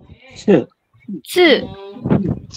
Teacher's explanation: ada desisan sama ada aspirasi yang keluar ya